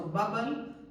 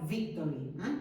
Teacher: entre la B, que sería bilabial, y la V, que en el caso del mallorquín o en el caso del inglés sería labiodental